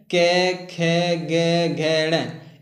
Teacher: जितना भी आपका क वर्ग है, क, ख, ग, घ, ण, इन सभी का जो उच्चारण स्थान है वो आपकी कंठ से होता है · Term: कंठ वर्ग